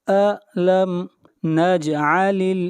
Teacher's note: جیم کے اوپر قلقلہ ہوگا، آواز کو ہلائیں گے